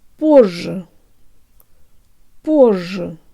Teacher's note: По. The ye in the second syllable actually sounds like a schwa, and remember to lengthen the zh a little.